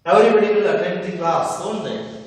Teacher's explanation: With falling tone, we have to pronounce the statements with question tags.